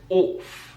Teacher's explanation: One pronunciation feature that we find in the Queen's English is the use of the or sound instead of ah.